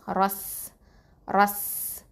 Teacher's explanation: அது வந்து ஹம்ஸ் பண்ணணும், அதாவது காற்று வெளியில் வரும்.